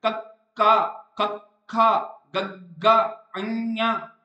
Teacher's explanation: ਸਵਰ ਦੇ ਵਿੱਚ ਪੈਦਾ ਹੁੰਦੇ ਆ ਕੀ ਕਰਦੀ ਹ ਇਹਦੇ ਵਿੱਚ ਜੀਭ ਸੋਫਟ ਕੋਮਲ ਤਾਲੂ ਨੂੰ ਸਪਰਸ਼ ਕਰਦੀ ਹੈ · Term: ਕੰਠੀ ਧੁਣੀਆਂ, ਕੰਠੀ ਧੁਨੀਆਂ